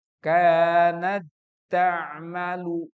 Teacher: Idgham itu menyatukan. Maka t-nya masuk kepada ta yang kedua.